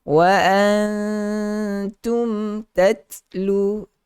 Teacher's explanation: memberikan sedikit sifat gunnah kepada huruf mim yang mati, tetapi jangan panjang. Kalau panjang dia jadi idgham, dia jadi macam dengung. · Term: Izhar syafawi